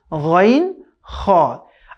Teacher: তিন নম্বর মাখরাজ হলকের শেষ আমাদের কন্ঠ যে শেষ ভাগ আছে